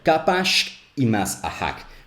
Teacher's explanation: we had to get that glottal stop after the s